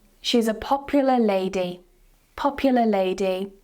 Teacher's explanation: We're not going to pronounce the R in popular simply because the next word starts with a consonant sound. So popular lady, no R.